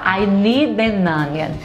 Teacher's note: E aí você vai conectar o som do D da palavra need com o N da palavra an. Fica I need an. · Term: linkagem